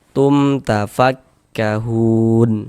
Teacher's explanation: Hun dibaca panjang. Ini namanya adalah mad arid li sukun.